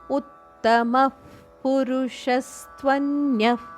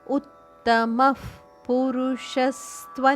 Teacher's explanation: ಉತ್ತಮದ ನಂತರ ಬರುವ ವಿಸರ್ಗದ ಉಚ್ಚಾರಣೆ ಫದಂತೆ ಕೇಳಿಸಬೇಕು ಶ್ವಾಸ ನಿಶ್ವಾಸ ಮಾಡಿ ತುಟಿ ಮುಚ್ಚಿ ಮುಂದಿನ ಶಬ್ದ ಪುರುಷ ಅದನ್ನು ಹೇಳುವಾಗ ಅದು ಫದಂತೆ ಕೇಳಿಸುತ್ತದೆ ಉತ್ತಮ ಪುರುಷಸ್ತ್ವನ್ಯ ಇಲ್ಲಿ